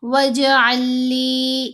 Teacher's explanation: وَاجْعَل لِّي، یہاں لام ساکن اور لام مشدد دونوں اکٹھی آ گئیں۔ اب ساکن لام نے مشدد لام کے اندر ہی مرج ہو جانا ہے۔ وَاجْعَل لِّی، ایسے علیحدہ علیحدہ کر کے ہم نے نہیں پڑھنا، آئین کو مشدد لام سے ملائیں گے۔